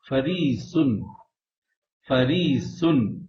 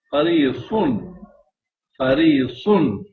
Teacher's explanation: سین باریک ہو رہا ہے اور صاد موٹا